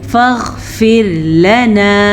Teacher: फ़ग़फ़िर, रा बारीक पढ़ेंगे। रॉ साकिन से पीछे वाले हर्फ पे हर्फ के नीचे ज़ेर की वजह से रॉ बारीक पढ़ी जाएगी